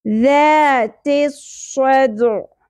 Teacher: اخر میں عین وسط حلق سے باریک اواز کے ساتھ ساکن ہو جائے گا